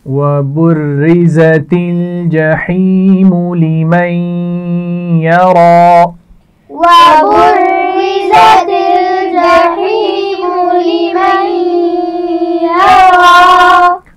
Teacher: را کے نیچے زیر ہے اس لیے اس کو باریک پڑھا جائے گا · زا کے مخرج کا بھی خیال رکھیے، اس میں سیٹی ہوتی ہے۔